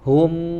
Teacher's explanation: ketika ada mim sukun ya setelahnya ada wau maka sempurnakan dulu mimnya tutup sempurnakan tutup mulutnya bibirnya Hum baru wa ya karena ini salah